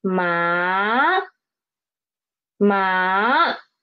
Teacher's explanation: The pitch is rising up from 3 to 5. Ma, ma. This is second tone. · Let's see second tone, which is ma. Okay, it started at pitch 3, and it ended at pitch 5.